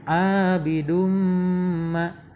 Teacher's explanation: Nah ini ada tanwin menghadapi mim ya, jadi harus dibaca dengung.